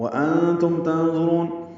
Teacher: نون ساکن کے بعد تا آنے کی وجہ سے اخفا ہے، میم ساکن پہ اظہار شفوی ہے۔